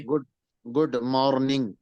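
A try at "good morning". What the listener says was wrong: आर को बिल्कुल यानी उसको जाहिर करने की कोशिश मत कीजिएगा। गुड मॉर्निंग। आर को बिल्कुल हल्का करें। गुड मॉर्निंग।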